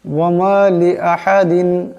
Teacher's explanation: এখানে হা আছে, বড় হা, আওয়াজটা গলা থেকে আনতে হবে।